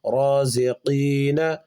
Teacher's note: قاف کو زبان کی جڑ اور اس کے مقابل اوپر کے تالو سے نکالیں گے اور پر کر کے پڑھیں گے چونکہ حروف مستعلیہ میں سے ہے، رازقین، مؤمنین، میں نے پچھلے